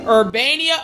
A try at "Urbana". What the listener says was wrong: Urbana, Ohio is real. Urbania. But that said Urbania, like Nia, like an I. Hold on, did it say Urbania? Urbana, Ohio is. There's no I in the city's name.